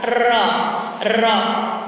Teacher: Jadi satu kali lagi Ibu, huruf ro makhorijul hurufnya torpul lisan, lidah kita, ujung lidah kita nempel ke gigi seri bagian atas